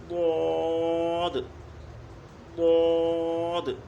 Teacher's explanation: زبان کی کروٹ، ہمارے اساتذہ نے کہا ہے کہ زبان کی جو الٹی سائیڈ ہے آپ کی بائیں طرف، وہ کنارہ تھوڑا سا اوپر کروٹ لے کر اور اوپر کی جو داڑھیں ہیں ان پر وہ لگے گا. زبان کی کروٹ جو ہے بائیں طرف والی، الٹی طرف والی، وہ اوپر کی جو داڑھیں ہیں ان پر لگے گی. تو اس کا جو ہے وہ مخرج، وہ اس کا مخرج ہے، اس کی ادائیگی ہوگی وہ اس طرح سے ہوگی ضاد ضاد.